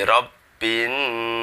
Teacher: di Barus dibaca hunah atau mendengung karena merupakan babacaan hunah yaitu ketika ada Nun dan mim yang bertasydid dibaca dengung dua ketukan atau dua harokat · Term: gunnah